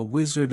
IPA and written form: ˈwɪz.ərd (Wizard)